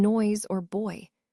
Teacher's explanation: where the sound begins with an O and moves into an I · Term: diphthong